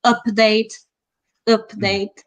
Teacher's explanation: it is a very strong sound and it's a mid-back unrounded vowel